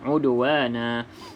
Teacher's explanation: Okey, udwana, da salah satu daripada qalqalah yang kita dah sebutkan tadi. Okey, qalqalah huruf da, maka dilantunkan sedikit